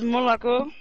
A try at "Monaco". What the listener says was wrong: Nee, Monaco. Er zit hier niet een dubbel 1 in Monaco.